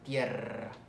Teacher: Y la múltiple cuando va a inicio de palabra, como en rata o tierra, que lleva doble R, vibra más la lengua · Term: vibrante múltiple